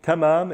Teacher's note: So tamam is a T sound. It's not a heavy T. It's not a ta. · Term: soft, regular T